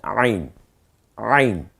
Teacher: আইন অলওয়েজ গলায় চাপ হবে